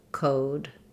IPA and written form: koʊd (Code)